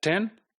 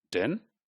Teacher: T is voiceless and d is voice.